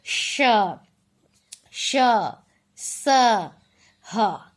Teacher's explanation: ऊष्म वर्णों का उच्चारण करते समय मुंह से हमें थोड़ी सी सीटी की सी आवाज आती है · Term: ऊष्म व्यंजन